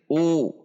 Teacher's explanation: dhammah dibaca u dengan membulatkan bibir u. Tidak dibaca tapi u.